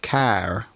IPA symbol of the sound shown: æ